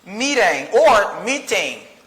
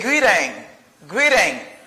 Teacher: I pronounce it as a fast D because the letter T is in the middle of two vowel sounds.